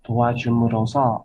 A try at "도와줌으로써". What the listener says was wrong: 도와줌으로써 이게 써자가 좀 강조가 돼야 돼요. 도와줌으로써 해야 돼요. 도와줌으로써 그렇게 하지 마시고 그럼 발음을 이제 그렇게 하다가 나중에 이 의로서와 의로써 구분 잘 못하게 돼요.